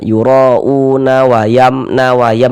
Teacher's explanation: yura'una wayam disambung gitu, maka panjangnya u tetaplah menjadi mad badal. Nah, tetaplah menjadi mad badal, dibaca dengan panjang 2 harokat.